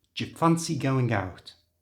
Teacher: for even faster English speech change do and U to the J sound